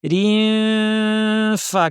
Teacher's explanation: দাঁতকে ঠোঁটের উপর এনে ফা বলার জন্য রেডি, নাক থেকে গুন্না।